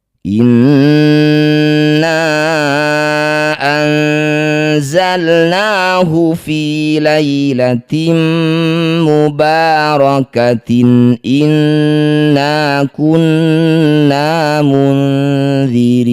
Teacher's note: Na yang bertanda layar panjangkan lima harakat. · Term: mad jaiz munfasil